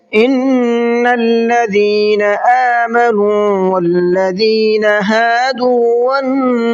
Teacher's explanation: ان کے نون میں غنہ کرنا ہے، الذین کے ذال کو سافٹ کر کے پڑھنا ہے · نون میں غنہ کریں گے اور صاد کو منہ بھر کے پڑھیں گے